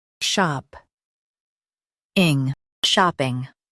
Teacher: Emphasize shop and keep ping light.